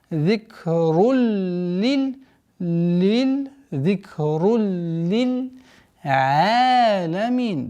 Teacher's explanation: идгам без назализации